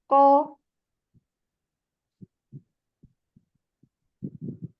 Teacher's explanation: Qaf pangkal lidah bagian belakang. Jadi pangkalnya kita naikkan. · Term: huruf qaf